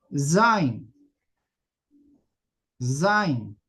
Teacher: Zin, no saying, ya no saying, no con z, no con s, como una z, pero vibrante. Vibrante, como si fuera una abejita. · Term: letra cibilante